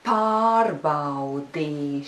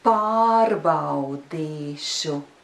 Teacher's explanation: you can put a small stress on the third syllable but remember that stress should not be bigger than the stress on the first syllable the stress should always be really noticeable on the first syllable